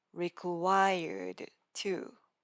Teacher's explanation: We hit the roof of our mouth with our tongue twice.